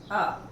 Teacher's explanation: हमारी जीभ देखिए, अ बीच मुंह में पड़ी हुई है, अ। तो ये हो गया हमारा मध्य स्वर।